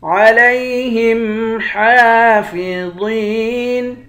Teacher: ہا پر کھڑا زبر ہے، ایک الف کی مقدار کھینچیں گے، واو کو موٹا پڑھیں گے، یا کے ساتھ ملا کر ایک الف کی مقدار کھینچیں گے، آخر میں نون ساکن ہے۔